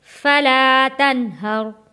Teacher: یہاں تنہر نون ساکن پہ غنہ ادا نہیں کریں گے